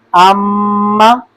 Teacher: تو جب غنہ کریں گے تو اس کی جو آواز ہے میم کی وہ नाक में जाएगी